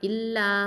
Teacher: அப்போ 4 இல்லைன்னா 5 ஹரக்கத்தை நீட்டணும். இல்லா அப்படின்னு நீட்டணும். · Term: மத்தல் ஜாயிசல் முன்ஃபசில்